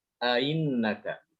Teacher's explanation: Jadi dibaca antara fathah dengan kasroh, antara fathah dengan huruf ya. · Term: tashil